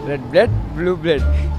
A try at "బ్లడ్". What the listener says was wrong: బ్రెడ్ కాదు బ్లడ్.